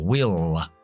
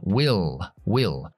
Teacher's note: Pronunciando la L oscura al final, will, subiendo la lengua más atrás y tocando los dientes superiores con la punta de la lengua, will, will.